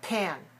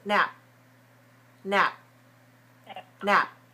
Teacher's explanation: When it comes to the beginning of a stressed syllable, you release a lot of air. When it comes to the end of a syllable, you don't need to release the air. For example, P-A-N is pan, pan.